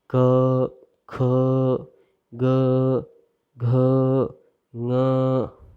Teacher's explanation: क, ख, ग, घ, ङ, इनका उच्चारण स्थान कंठ है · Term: कंठय